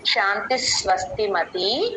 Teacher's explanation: శాంతిహి పక్కన విసర్గ స కింద స లాగా మారిపోయి స కింద స వత్తు వత్తు శాంతి స్వస్తిమతి ఆ శాంతి నుంచి స